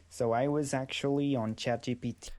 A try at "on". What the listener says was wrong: I believe that's a problem with the consonant, not the vowel. I think the vowel might be fine, but I want n instead of this on, no. I want n.